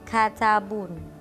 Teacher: suku kata pertama kaf dalam kata katabun atau bahasa Inggrisnya itu books adalah posisi dari tekanan atau suku kata yang diberi tekanan dan diucapkan dengan lebih tegas dan lebih jelas, maka itu ada hubungannya atau jika dibandingkan dengan suku kata lainnya yaitu ta.